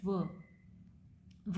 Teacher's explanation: लेबियोडेंटल है, that means lips और teeth, lips plus teeth, इसके नाम से आपको समझ आ रहा है इनको आर्टिकुलेट करा जाता है।